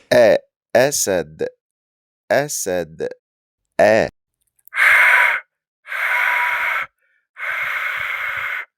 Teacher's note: The Hamza is like the sharp stop and ouch. It's a sharp cutoff of air in your throat. Think of the sound between A-O.